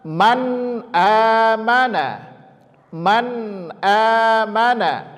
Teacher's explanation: izhar izhar secara bahasa artinya albayan jelas ya biduni ghunnah tanpa dengung · Maka ketika ada nun sukun atau tanwin, sekali lagi pembahasannya, pokok intinya adalah nun sukun atau tanwin bertemu salah satu huruf yang 6 ini, maka dinamakan dengan izhar. Izhar secara bahasa artinya al-bayan, jelas, ya, biduni gunnah, tanpa dengung